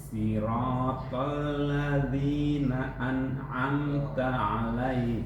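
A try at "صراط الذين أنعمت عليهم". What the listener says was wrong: Sedikit tawasud lagi. An'amta 'alaihim. Amta kurang.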